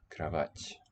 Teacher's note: pre-tonic o shifts to just an a